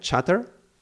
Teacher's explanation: And the and the transition is very sudden but then so the the the T is very it cuts. The T cuts very suddenly but then there is a a sh the fricative sound that carries on afterwards. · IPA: /tʃ/